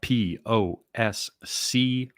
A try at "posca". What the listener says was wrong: Posca with an A at the end. Posca.